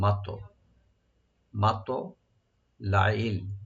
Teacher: মাত মিম ওপেন রাখবেন, তোয়াটাকে একটু ডিপ করে কলকলা হবে